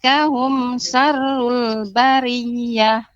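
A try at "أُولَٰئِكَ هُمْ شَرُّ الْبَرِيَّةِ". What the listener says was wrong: Kemudian huruf shin, Ibu, lebih sedikit ditampakkan lagi, belum, agak kurang pas sedikit ya. Sya. Coba Ibu ucapkan sya.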